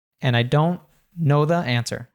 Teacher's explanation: we have a the here that's reduced to thuh, and that links to KNOW. An'- I- don' know thuh answer.